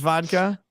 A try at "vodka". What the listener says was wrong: No, we say vodka with a W, vodka.